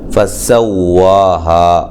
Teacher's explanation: سین کو باریک سیٹی سے